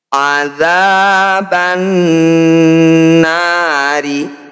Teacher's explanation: Harus dibaca dengung atau ditahan 2 harokat. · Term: gunnah musyaddadah